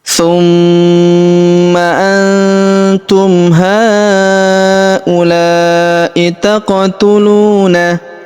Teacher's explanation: huruf ma kita tahan dan kita tekan serta kita dengungkan dua sampai 3 harakat karena di atasnya terdapat tanda tasdid yang ini.